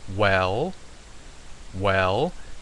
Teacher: that is an ascending tone because you can notice that it's going up the the sound is going up